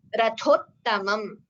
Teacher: Rathottamam, th. Here, the second letter in this word, ratho, is Mahaprana th. The third letter in the word, ta, rathottamam, this is Alpaprana. So both are together and it should be chanted perfectly as rathottamam.